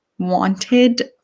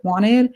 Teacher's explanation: A lot of people would just sort of swallow the T and make it wanted.